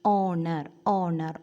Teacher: O sound, vowel sound. H is silent here. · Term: H silent